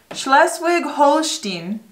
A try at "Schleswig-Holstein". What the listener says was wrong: Not bad.